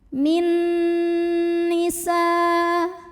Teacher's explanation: Berikutnya di sini ada hukum idgham bi gunnah karena ada nun sukun yang menghadapi huruf nun. Maka nun pertama dimasukkan atau dileburkan ke nun kedua disertai bunyi dengungan. Jadi ini langsung fokus ke nun kedua ya, min bunyinya n dan tahan.